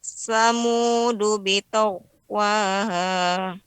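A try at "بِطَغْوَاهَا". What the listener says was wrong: Ya, kurang tebal ya, karena gha juga di antara huruf isti'la. Bitaghwaha.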